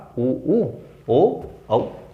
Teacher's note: जीभ के पिछले हिस्से से जो निकलते हैं वो कहलाते हैं पश्च स्वर, और ये हैं हमारे सामने 4, उ, ओ, औ।